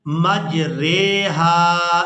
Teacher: امالہ کا معنی یہاں پر یہ ہے کہ ہم نے اس را کو کھڑی زیر کی طرف آدھا جھکانا ہے، مکمل جھکا کر نہیں پڑھنا بلکہ آدھا جھکا کر پڑھیں گے اور اس کو کہتے ہیں امالہ کرنا۔